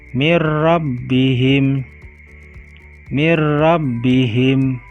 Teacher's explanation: mati atau tanwin bertemu dengan huruf lam dan rok cara bacanya mengucapkannya dengan memasukkan suara nun mati atau tanwin pada huruf sesudahnya dan dibaca tanpa dengung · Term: idgam bilagunnah